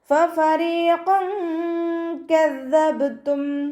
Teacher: ഫഫരീഖൻ കദ്ദബ്തും, 2 ഫാഇനെയും നമ്മൾ ലൈറ്റാക്കിയിട്ട് ഉച്ചരിക്കുക. മേലെ മുൻപല്ലിൻ്റെ അറ്റം താഴെ ചുണ്ടിൻ്റെ ഉൾവശത്ത് വെറ്റായ ഭാഗത്ത് വെച്ചിട്ട് ഉച്ചരിക്കുക കേട്ടോ. റോ കെസ്റയാണ്, താഴ്ത്തി ഉച്ചരിക്കുക. · ഖാഫ് ഇസ്തിഅലാൻ്റെ ലെറ്ററാണ്, തഫ്ഹീം ചെയ്തിട്ട് ഉച്ചരിക്കുക.